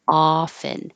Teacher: you have to lower your jaw a lot for the ah vowel.